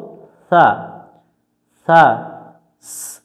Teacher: সা অক্ষর জিহব্বার আগা থেকে নরম করে পড়তে হয়। জিহব্বার আগা, অর্থাৎ জিহব্বার আগাটা সামনের নিচের দাঁতের গোড়ার সাথে আমরা লাগিয়ে দেব, দিয়ে এটা উচ্চারণ করব সা, সা।